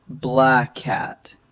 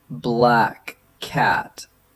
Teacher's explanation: There's also linking that happens when the same consonant sound ends one word and starts the next, like black cat. Instead of saying two separate K sounds, speakers usually hold it as one slightly longer sound. So it's black cat, not black cat with a clear pause.